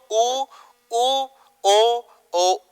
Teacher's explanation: उच्चारण करते समय आपकी होठ की आकृति बिल्कुल गोल हो जाएगी। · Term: वृत्ताकार स्वर